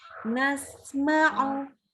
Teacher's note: Sambung ya. Jadi suara sin ini rohoah. Ini suaranya dan udaranya terus mengalir sampai mim.